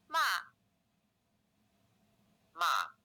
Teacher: the sound pitch goes from high level five all the way down to low level one this is a five one contour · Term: fourth tone, the fourth tone